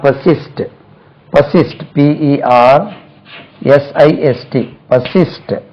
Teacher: Stress lies on the second syllable.